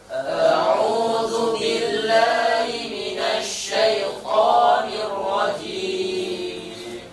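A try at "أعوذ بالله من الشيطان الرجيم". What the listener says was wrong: Bis, ujung lidah tempelkan di gigi seri bawah, ujung gigi seri bawah. Jadi jangan terlalu besar bunyinya. Jangan lepaskan semuanya. Bis tidak seperti itu, tapi lengketkan sini sehingga anginnya terkontrol. Hanya punya sifat hamas.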